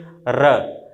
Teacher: जैसे हम र का उच्चारण जब भी करते हैं तो देखते हैं हमारी जिह्वा कम से कम 2 या 3 बार हमारे मसूड़े के पास जाके रगड़ करती है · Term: प्रकंपित व्यंजन